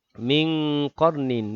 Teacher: nun mati bertemu dengan qaf. Ikhfa hakiki dengung, juga 2 harakat.